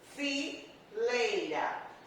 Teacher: O E, vogal, som, que som tem mais força. E o I, semivogal, o som que tem menos força.